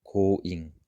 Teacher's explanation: in the beginning of a word position a little bit more like an English k very soft k. So coing and here t in the beginning position as well a little bit more like a soft t in many cases.